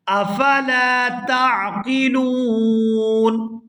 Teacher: یہاں لام کے ساتھ الف مدہ ہے، اس کو کھینچ کر ادا کریں گے۔ افلا تعقلون، یہاں وقف کریں گے تو وقف کی صورت میں نون جو ہے یہ ساکن ہو جائے گا۔